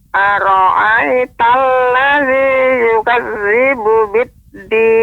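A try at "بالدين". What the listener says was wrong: Ya, pengucapan dal, Nek. Pengucapan dal dia tidak menggunakan ujung lidah. Ujung lidah maka suaranya akan lebih tertekan. Biddin. Nah, ini ujung. Ini kurang tepat. Akan tapi dengan punggungnya. Biddin. Ini ujung. Bagian punggung. Ini ujungnya, bagian atasnya.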